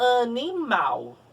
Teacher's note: Mal é a sílaba tônica dessa palavra.